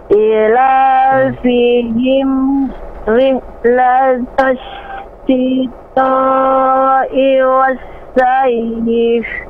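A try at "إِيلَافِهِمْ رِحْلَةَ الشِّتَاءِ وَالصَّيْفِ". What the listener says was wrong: Ila dua harokat, I dua harokat, La dua harokat. Ila fihim rihlatash shita'i was-sayf.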